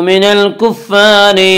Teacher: मिनल कुफ़्फ़ारि की रा को बारीक पढ़ा जाएगा